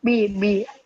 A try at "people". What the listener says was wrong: لا مش بي مش بي look at me بابا. كل ما تحاول تقول ب هيطلع صوت ب هيطلع ب. ما تطلعش صوت.